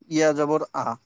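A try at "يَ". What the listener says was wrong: ইয়া যাবার ইয়া। ইয়া যাবার আ নয়, ইয়া যাবার ইয়া।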